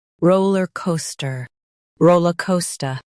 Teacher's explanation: Emphasize ro and co. Keep ler and ster light.